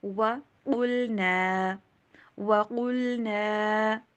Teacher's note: وا کے اوپر ہونٹوں کو گول کیجیے